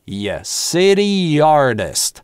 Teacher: А раз это /iː/, то связываем его с последующим гласным через linking [j]